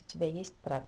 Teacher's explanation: We just put a question mark in writing and we read it with a rising intonation.